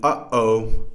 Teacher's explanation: For example, in the exclamation uh-oh, there is a glottal stop between the two syllables here